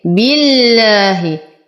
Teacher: نرقق اللام في اسم الجلالة لأنها سبقت بكسر